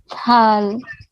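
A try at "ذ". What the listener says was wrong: Dal. Yeah, your sound is near to dal. Okay, so don't blow air. Don't blow air when you are pronouncing dal. Just keep it simple. Your tip of the take out your tongue. Touch it with your front edges of your front two teeth. Dal.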